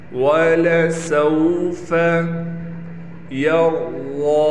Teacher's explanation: रा को भी मोटा किया जाएगा और वात को भी मोटा करके पढ़ेंगे